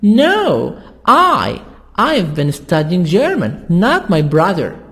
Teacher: So here we stress in the answer on the opposite. Not my brother, but I.